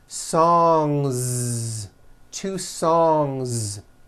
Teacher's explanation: Song ends with a voiced ng sound. So if you make it plural, don't forget to add a voiced Z ending